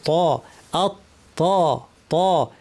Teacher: ত কিন্তু ভারী হরফ, আমাদের জিহ্বা উপর পাটির দাঁতের গোড়ায় লাগিয়ে এবং আওয়াজটাকে উপরে ঠেলতে হবে